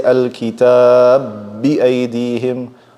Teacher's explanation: If I have al-kitaba bi-aydihim, two bas are meeting. I merge them together and I say al-kitab bi-aydihim. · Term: big merging